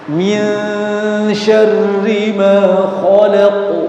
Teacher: Perhatikan, syarri ya itu tidak tebal ya, jangan syarri tapi min syarri, syarri tipis di situ rohnya.